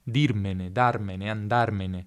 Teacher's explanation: ne è un pronome atono, l'accento non cade mai su ne, si attacca nella pronuncia alle parole che seguono.